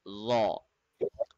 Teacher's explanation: tip of the tongue will be touching at the back side of the upper tooth, and we will make it heavy.